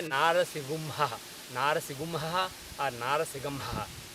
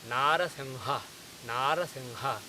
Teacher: But before saying Ga, at the last second you drop Ga, instead you say Ha.